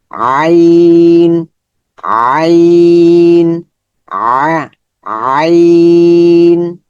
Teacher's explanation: এখন আইনের মাখরাজ কোথায়, হলকের মধ্যখান হইতে, ওই হ্যায়ের মতো, হ্যাঁ।